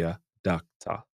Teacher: the O would make more of an a sound and the o r would make another a sound